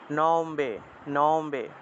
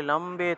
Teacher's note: মনে রাখবেন ময়ের নিচে যে বফলাটা আছে এটা হলো বর্গীয় ব, অন্তস্থ ব নয়, সেজন্য সেটাকে সাধারণ বয়ের মতোই উচ্চারণ করতে হবে